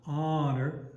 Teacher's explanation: Make sure we're leading towards those accented syllables in those phrases, and it's almost more backing off of the unaccented syllable rather than really pushing the heavier syllable. Honor, more, less, more and then lighter on that.